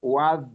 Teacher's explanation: makhrajnya di ujung lidah bertemu dengan gigi seri atas. Dan sifatnya ketika disukun dia rokhawah. Diupayakan rokhawah ya, mengalir.